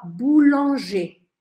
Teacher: Perceba que eu escrevo com ER no final, mas eu não falo R no final, porque ER no final vai sempre ter som de E.